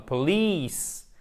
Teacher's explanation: Police et pas police, mais police. On a l'accent tonique, ici, c'est un I long.